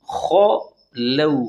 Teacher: خو لو، خو کو ہر حال میں موٹا پڑھنا ہے، اور لو میں واو لین ہے یعنی ہونٹوں کو نرمی کے ساتھ گول کرنا ہے